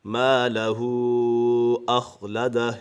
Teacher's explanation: مالہ، یہاں پر الف مدہ ہے، الف مدہ کو ایک الف یعنی دو حرکات کے برابر کھینچ کر پڑھیں گے